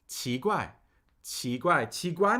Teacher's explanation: Second tone, rising tone. Then a fourth tone.